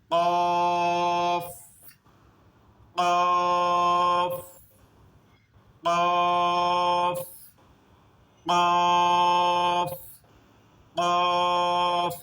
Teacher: কফ কফ কফ কফ কফ, একটা আওয়াজ বের হচ্ছে, একটা বাড়ির ধাক্কা খাওয়ার একটা আওয়াজ বের হচ্ছে। কফ এরকম ভারী খাবে, গলার শেষে একটা ধাক্কা খাবে উপরের দিকে। · যদি কাফ কাফ হয় তখন এটা আরেকটা কাফ রয়েছে ওইটার মতো হয়ে যাবে, কিন্তু এটা দুই নকতা হলো কফ। এই কফটা উচ্চারণ করার সময় ভিতরে গলার শেষের দিকে ভারী কাঁপে